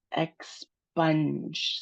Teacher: We have two syllables for that. The stress of the word is on spunge.